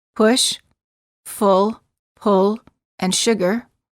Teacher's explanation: the lips are very rounded and the tongue is relaxed the back of the tongue is raised and slightly higher than for the O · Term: uh as in good